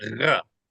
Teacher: it's mainly the uvula that's vibrating